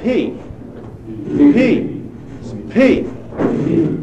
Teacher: what stops the air when you say P? Lips. The lips. And so it's a bilabial stop.